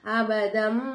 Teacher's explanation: தன்வினுடைய குறியீடை மீமா மாத்தி நம்ம உச்சரிக்கணும்